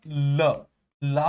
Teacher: ल, ला को भी बोलने में जिह्वा मसूड़ों को छूती है